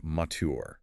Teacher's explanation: General American forces the T and the Y to collide, fusing them into a ch africate, and finishes with a hard bunch tongue R.